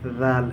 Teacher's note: रल का मखरज है जबान की नोक और ऊपर के सामने वाले दांतों के किनारे